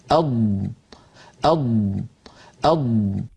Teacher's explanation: ضاد کا مخرج، اض، اض، اض، ملاحظہ فرمائیں کہ ضاد زبان کی اطراف یا کنارے اور ان کے ساتھ جو اوپر داڑھ ہیں اس سے ادا ہوتا ہے۔